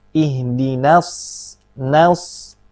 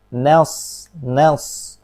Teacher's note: Na tipis. Nah, ketika bersambung ke huruf shad yang tebal, yang punya sifat isti'ala dan itbaq, hati-hati na-nya jangan sampai menjadi tebal.